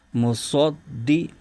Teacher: तो यहां सद को मोटा भी करना है और दाल पर जमाव के साथ अदा करना है